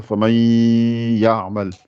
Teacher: le idgham, essaie de faire sortir plus par le nez.